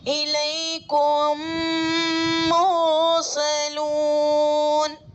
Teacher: मीम साकिन के बाद मीम आ रहा है तो मीम को मीम से मिलाकर गुन्ना के साथ पढ़ेंगे।